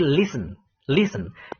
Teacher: Yang ditekankan di situ list-nya.